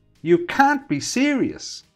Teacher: Notice the stress on the serious and the way the intonation rises at the end